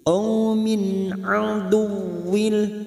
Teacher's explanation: Adu masuk ke huruf waw yang bertasdid hanya masuk tanpa mendengung, tanpa ditekan lama-lama.